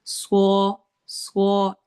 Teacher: میں حروف حلقی میں سے، حلق کے لیٹرز میں سے ہے، ہم نے حلق کے درمیان سے نکالنا ہے، ہا کی آواز کو کوشش کرنی ہے نکالنے کی